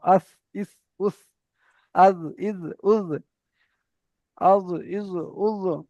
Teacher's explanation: জিভের আগা এবং সামনের উপরে দুই দাঁতের আগার সঙ্গে লাগিয়ে উচ্চারিত হয় সা, জাল, জ।